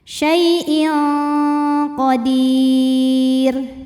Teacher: Kemudian ada hukum ikhfa ab'ad karena tanwin kasrah menghadapi qaf, maka tanwin dibunyikan samar-samar, siap-siap ke qaf disertai dengung. Dengungnya besar ya, karena qaf makhrajnya jauh dari nun